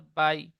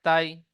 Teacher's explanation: আর লিনের পড়া পড়বো, ইয়া সাকিনের ডান দিকে জাবার এসেছে, একে ইয়া লিন বলে। ইয়া লিন নরম আওয়াজে তাড়াতাড়ি পড়তে হয়, টান দেওয়া নিষেধ